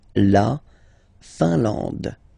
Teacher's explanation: IN here, nasal, un. AN, nasal, en. And then D, final E, not pronounced.